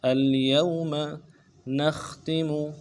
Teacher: نون کو خا کے ساتھ ملانا ہے، خا کو موٹا کریں گے